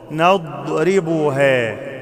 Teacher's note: أخلي بالي من حرف الضاد ما أعملش فيه قلقلة ما أقولش نضربها مش نض نضربها أكتم الضاد نضربها وتلك الأمثال